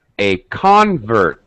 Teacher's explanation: In a noun, the first syllable, the first vowel sound will have stress. Higher pitch, maybe even stretched a little bit, maybe even a little louder.